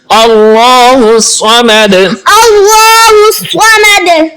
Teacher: الصمد، صاد کو پر پڑھیں گے اور دال پہ قلقلہ بھی کریں گے۔